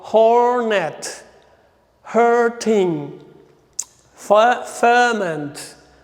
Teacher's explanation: letter R is not pronounced and vowel is pronounced long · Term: long syllable